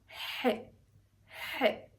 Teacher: But then when we say the he sound, it feels like somehow you're squeezing your throat.